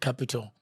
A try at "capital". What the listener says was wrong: You cannot say capital. Okay. It's capital. The T has to be pronounced.